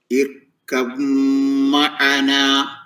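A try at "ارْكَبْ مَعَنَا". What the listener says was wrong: ബാ തീരെ പറയുന്നില്ല കേട്ടോ. ഇർകം മഅന.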